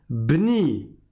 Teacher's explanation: quand tu ne commences pas par ce mot-là, il y a un mot avant, tu fais sauter ce alif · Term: alif de liaison